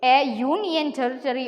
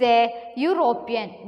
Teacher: the words university, union and European begin with a vowel but have the consonant sound U at the beginning